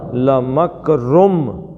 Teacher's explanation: رم پڑھنا ہے، رن نہیں پڑھنا کیونکہ آگے میم ہے